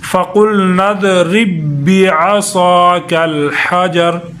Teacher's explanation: با کو با کے ساتھ ادغام ہوگا تو با ایک ہی پڑھی جا رہی، لیکن سختی کے ساتھ پڑھی جا رہی۔ فَقُلْنَا اضْرِب بِّعَصَاكَ، صاد کو موٹا کریں گے، بِعَصَاكَ الْحَجَرَ حجر۔